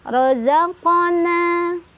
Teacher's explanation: Cara bacanya adalah dipantulkan, pantulannya kecil aja, ngalir ya. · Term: qalqalah